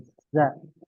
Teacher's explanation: za itu ujung lidah yang menempel pada dua gigi seri bawah. Ingat, dua gigi seri bawah ditempelkan ujung lidahnya ke dua gigi seri bawah.